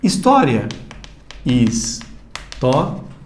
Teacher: O encontro de 2 vogais. Só que o I é uma semivogal e o A é uma vogal. Semivogal para vogal, de 2 para 3 é um ditongo crescente aqui.